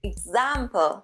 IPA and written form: ɪɡˈzæm.pəl (example)